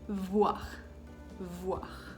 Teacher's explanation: Cuando pronuncio la V, mis labios no se tocan, sino los dientes superior van a tocar el labio inferior